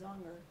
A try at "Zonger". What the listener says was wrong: Z-O-N-G-E-R? Zonger. Sounds like you're saying D. Zonger.